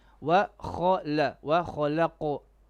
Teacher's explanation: Qaf needs to be heavy. The qalqala also heavy.